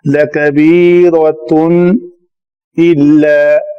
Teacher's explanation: را کے اوپر زبر ہے تو را کو پر پڑھیں گے